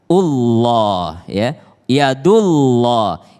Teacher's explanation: ketika dia berbaris damah bertemu dengan Allah maka dia juga tebal